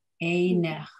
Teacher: the second syllable, ne, that yud just doesn't do anything for us. It's still just ne. And then it ends with cha. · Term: silent yud